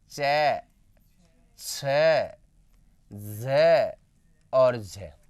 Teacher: उच्चारण में स्पर्श के साथ-साथ थोड़ा थोड़ा संघर्ष भी करना पड़ता है